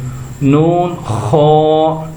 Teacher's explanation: خا جو ہے حروف مستعلیہ میں سے ہے، اس کو تھوڑا سا پر یعنی موٹا کر کے پڑھیں گے۔